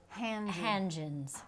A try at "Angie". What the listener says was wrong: But without Hangens. The H, just Angie.